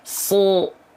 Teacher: Jadi niat kita tetap melafalkannya A, sa. Tapi karena ada si pangkal lidah naik, jadinya O pasti. Gak usah di-o-o-kan. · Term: huruf shad